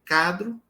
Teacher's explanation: quando eu digo cadro não tá labial